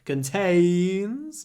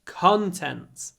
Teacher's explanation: the stress moves contains second syllable contents first syllable